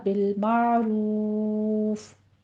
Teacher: واو مدہ کے بعد فا ہم ساکن کر رہے ہیں، وقف جائز ہے، تو یہاں پہ فا پر ہمس ہوگا